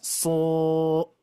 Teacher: Nah, di sini ada huruf sod. Ketika diberikan mad, itu madnya menjadi tebal.